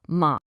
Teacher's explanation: That upward inflection. That's it. That's the second tone.